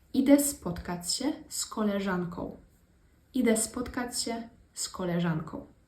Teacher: we kind of changed the z into a s sound, because it's just like easier to pronounce, really.